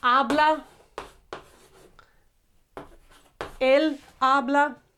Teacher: because these H's are silent, we don't have a sound for these H's. The first sound is A, okay? So it needs to start with the stressed, accentuated A, not necessarily with tilde, okay?